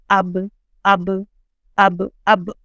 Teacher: बा के लिए दोनों जो होंठ हैं अपने उनके वेट पार्ट्स मिलेंगे, अंदर के जो वेट पार्ट्स हैं वो टच होंगे। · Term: मखरज